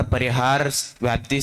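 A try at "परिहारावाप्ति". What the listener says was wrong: सभी एक शब्द गलत उच्चारण कर रहे हैं। परिहार अवाप्ति, व्याप्ति नहीं है वहां, अवाप्ति है ना। व्याप्ति शब्द दूसरे अर्थ में आएगा। परिहार अवाप्ति।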